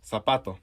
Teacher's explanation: the letter z and the letter c before i or e are pronounced s rather than th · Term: ceseo